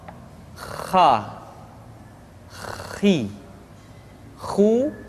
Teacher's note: huruf H dikeluarkan dari tengah-tengah tenggorokan